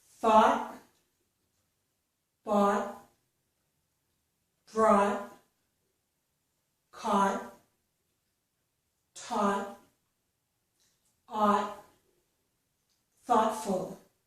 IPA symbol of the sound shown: ɔ